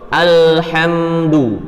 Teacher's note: Kemudian lam sukun pada kalimat alhamdu. Kita qalqalahkan. Salah. Yang benar kan alhamdu.